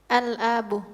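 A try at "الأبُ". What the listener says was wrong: La, al-abu. Al-abu. Abun. Asluhu abun. Al-abu. Ya, bukan al-abu. Enggak panjang. Hamzahnya tidak panjang. Tidak boleh dibaca panjang.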